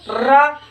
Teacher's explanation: हमारे मुंह के अंदर कंपन उत्पन्न करता है कंपन उत्पन्न करता है इसलिए इसे क्या कहते हैं prakramit कहते